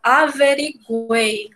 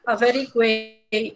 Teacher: A gente escuta o som do U, né? A gente escuta as três vogais aí, o U, o E e o I